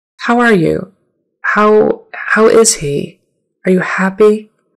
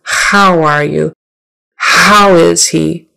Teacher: your tongue is not going to tense up as much for that H it's just gonna be very soft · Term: softer H